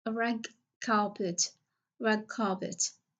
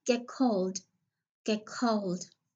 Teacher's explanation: the t or d will be changed into velar plosives that the following word starts with